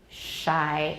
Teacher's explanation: the blade of the tongue is close to the back of the alveolar ridge and then we blow out air and that's to make the sound in what word shy and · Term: fricative